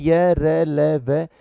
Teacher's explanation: इनका उच्चारण जीभ, दांत, तालु, ओठ आदि के परस्पर मिलने से, परस्पर स्पर्श करने से होता है, परंतु इन सभी का पूरी तरह से स्पर्श नहीं होता। जब इनका हम उच्चारण करेंगे तो थोड़ा सा हमें आपस में एक बार ये स्पर्श होने का महसूस होगा, लेकिन पूर्ण स्पर्श इनका कहीं भी नहीं होता। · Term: अंतस्थ व्यंजन